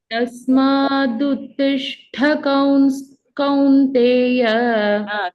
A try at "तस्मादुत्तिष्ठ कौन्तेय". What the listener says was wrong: कौंस स is not there